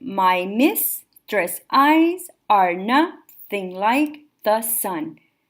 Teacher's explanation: My is unstressed, miss is stressed. Tress eyes, tress is unstressed, eyes is stressed. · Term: iambic pentameter